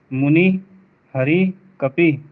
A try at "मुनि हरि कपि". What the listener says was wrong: यहाँ तीनों में आप ई को ज्यादा खींच दे रहे हैं। ये हरस्व है तो उसकी टाइमिंग हरस्व की ही रहेगी, डबल पे नहीं जाएगी, सिंगल ही रहेगी।